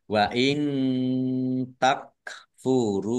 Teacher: nun sukun bertemu dengan huruf tak bacaan ikhfa dibaca samar-samar.